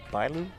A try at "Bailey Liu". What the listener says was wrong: Bailey Liu. Bailu's kind of close. You had a couple syllables in there.